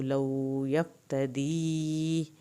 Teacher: لو یفتدی یا ساکن کی وجہ سے اس کو کھینچیں گے، فا کو نہیں ہلائیں گے